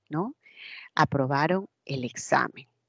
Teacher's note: es una oración enunciativa y que la inflexión tonal es descendente no aprobaron el examen decae es una inflexión hacia abajo pero